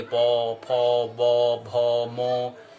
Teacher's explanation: इन वर्णों का उच्चारण स्थान क्या है? ओष्ठ मतलब होठों में है।